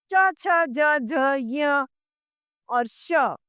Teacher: अब तालु से बोले जाते हैं। इ और इ व्यंजनों में च, छ, ज, झ, य और श ये तालव्य कहलाते हैं।